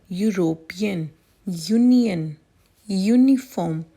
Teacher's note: Let's pronounce the following: European, Union, uniform. All these words begin with YU phonic sound, which is a consonant sound.